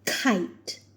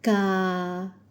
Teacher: we can clearly see the difference in the puff of air for the k sound in English and Malay